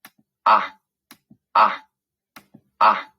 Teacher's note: fíjense que es poco en movimiento y casi nula la elevación de la lengua cada vez que decimos a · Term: vocal abierta